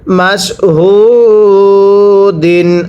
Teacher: মিম শিন জবর মাস, হাওয়া পেশ হু, দাল দুই জের দিন, মাস হু দিন। এই যে পেশের পরে ওয়াও সাকিন এক আলিফ টানতে হয়